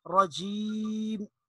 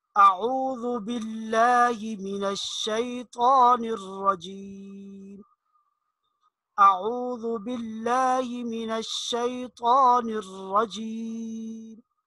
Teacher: اس یا کو تھوڑا سا کھینچ کر پڑھیں گے، اور میم کی ادائیگی میں دونوں ہونٹ آپس میں ملتے ہیں تو آخر اس کا جو وقف ہے وہ اس طرح ہو کہ دونوں ہونٹ آپس میں ملے ہوئے ہوں۔ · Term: یا مدہ